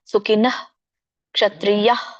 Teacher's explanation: ಸೊ ವಿಸರ್ಗನ ನೀವು ಅಲ್ಪ ಹೇಳ್ಬೇಕು, ಪೂರ್ಣ ಹ ಹೇಳಂಗಿಲ್ಲ